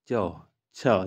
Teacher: तालव्य व्यंजन जो हमारे तालू से बोला जाता है